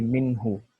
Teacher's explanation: یہاں پہ نون کی آواز صاف ہے، کوئی غنہ ایڈ نہیں ہو رہا ہے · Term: اظہار